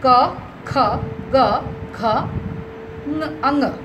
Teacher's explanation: from kantha the sound is coming that's why it's called kanthaya